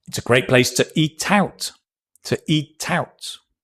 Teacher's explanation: The two becomes tuh 'cause we're stressing the noun.